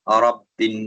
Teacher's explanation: را پر زبر ہے تو ہم اس کو تھوڑا سا پور کر کے پڑھیں گے